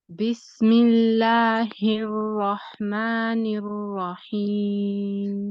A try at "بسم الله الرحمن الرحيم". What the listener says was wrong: Okay, so I can tell when you say the word ar-Rahman, when you say ar-Ra, you're kind of circling your lips, going in a slightly like a type of position, right? You're circling them a little bit.